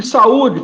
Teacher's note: mas é a penúltima sílaba mais forte